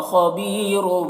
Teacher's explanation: खबीरुम में खौ को पुर पढ़ेंगे, हुरूफ मुस्तालिया में से है।